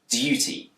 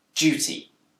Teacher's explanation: In Britain, this word can be pronounced with a d sound, duty, but it's also commonly pronounced with a j sound, duty. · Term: yod coalescence